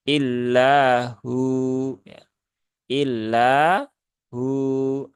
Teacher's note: mad asli dibaca Dua harakat illahu Ya illah hu Nah jadi dibaca dua harakat dengan mensukunkan wau ya tidak mengharakati huruf wau